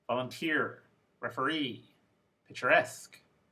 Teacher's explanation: the suffix is the last syllable and the word stress is the last syllable as well